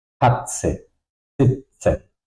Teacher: to pronounce the T set, it's a little bit basically like T and a long S.